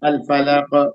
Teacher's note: تو اب یہاں قاف پہ قاف حروف قلقلہ میں سے ہے اور یہاں برب الفلق زیر ہے لیکن آپ ٹھہر رہی ہیں تو قلقلہ کیجیے